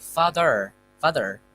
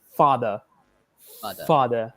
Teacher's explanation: So in British accents, they'll have to omit the R when they get it at the end of the word.